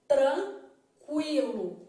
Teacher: na palavra tranquilo, eu estou vendo que a letra U é pronunciada de forma fraca